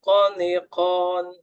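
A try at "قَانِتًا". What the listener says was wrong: Jadi, nanti tinggal lagi benturkan agak kencang dalam pengucapan ko-nya. Qaniqa, ko, ko. Benturannya itu kurang kurang terlihat ya.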